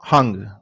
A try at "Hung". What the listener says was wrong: Actually, it's Ung. The last name is from Chinese origins and is pronounced without the H, but it's just Ung.